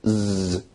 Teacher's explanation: z produces a vibration so it's a voiced sound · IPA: [ z ]